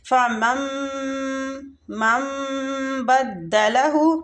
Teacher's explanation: غنہ کے ساتھ اخفاء شفوی ہوگا ادھر